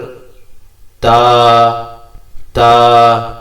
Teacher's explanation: আপনার দাঁতের মাড়ির সাথে জিহ্বার আগা সেটা টাচ হবে